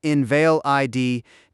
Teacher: invalid with the stress on the second syllable, invalid, denotes something weak in law, whereas invalid with the stress on the first syllable denotes a person weakened by illness.